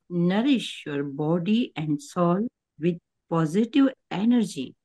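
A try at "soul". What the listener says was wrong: हाँ, एनर्जी तो ठीक आ गया, लेकिन सोल ठीक नहीं आया है। सोल नहीं, सॉल नहीं। सॉल तो कुछ और हो जाएगा, शब्द ही बदल जाएगा। सोल, सोल।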